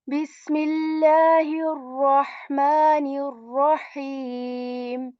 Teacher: the ar-Rahman and ar-Rahim has this ha which comes from the middle portion of our throat